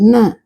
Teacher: நாவின் நுனி மேல்வாய் பல்லின் அடிப்பகுதியை தொடுவதால் நகரம் பிறக்கிறது